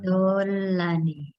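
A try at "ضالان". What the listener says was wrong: Panjang.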